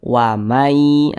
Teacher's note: Kita baca wamai, jangan dibaca waman yata'adda hudu, jangan. Tapi bunyi nun sukun dimasukkan ke huruf ya sehingga dibaca wamai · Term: gunnah